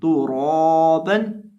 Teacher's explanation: अब यहाँ हम रॉ को लंबा करके पढ़ेंगे और एक अलिफ के बराबर लंबा करके पढ़ेंगे, और रॉ को मोटा भी करेंगे, क्योंकि रॉ के ऊपर खड़ी ज़बर है। रॉ के ऊपर खड़ी ज़बर हो या उल्टा पेश हो तब भी हम रॉ को मोटा करके पढ़ते हैं।